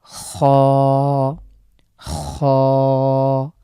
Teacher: খ গলার একদম আমরা যে গড়গড়া ভাব আছে অনেকটা এরকম আসবে। খ এটা উচ্চারণে আমরা এক আলিফ টানবো। · এই খ লেটারটি আমাদের কন্ঠনালীর শেষ থেকে উচ্চারিত হয়